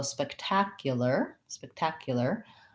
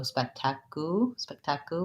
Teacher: stress syllable with my black cat vowel spike so it's spectacular this ar says the er sound so just an er even though it's spelled with letter a